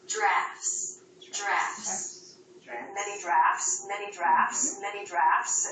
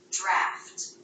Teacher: the T wasn't between two consonants it was simply part of an ending consonant cluster so the T was clearly pronounced